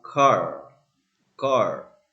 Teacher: This one is rotic because the R is pronounced in all positions like car car.